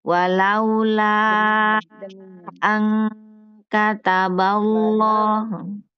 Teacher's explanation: nun ketemu dengan kaf, ang, dibacanya ang